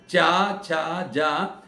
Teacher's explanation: जीभ के बीच का भाग ऊंचा होता है और वो तालु के साथ जाके टकराता है, आगे का हिस्सा तो नीचे रहता है। आप बोल के देख लीजिए, चा छा जा, ऐसा नहीं कि पूरी जीभ आपके ऊपर जाए, आवश्यक नहीं है।